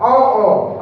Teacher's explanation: कांठ और ओष्ठ से औ औ बोला जाता है।